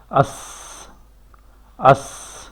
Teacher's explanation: تو اس کے مقابلے میں جو ہے سین اور سواد، اس میں ہمس کی صفت پائی جاتی ہے، یعنی سانس جاری رہتی ہے